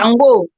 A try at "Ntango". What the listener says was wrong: C'est Ntango, c'est Kikongo, c'est Ntango. Parce que eux, ne peuvent pas prononcer le N et la nasale.